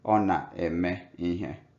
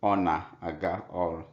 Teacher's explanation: So here na-aga harmonizes with the ga, while the first example na-eme harmonized with the me. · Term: vowel harmony